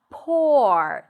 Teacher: That's an or vowel sound. You drop your jaw and then you lift the tongue up for the R.